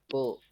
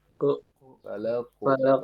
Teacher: Iya, jadi bunyinya tuh di antara fathah dan dhammah. Jadi bunyinya tuh tu.